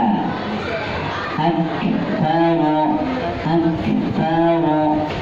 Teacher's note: menghembus nafas pada saat mengucapkan k